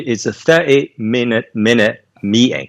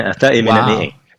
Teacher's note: E é isso que acontece no inglês britânico que não acontece no americano de jeito nenhum. Sumir com o T entre vogais.